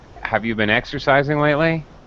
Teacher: notice my intonation rising at the end it's a yes or no question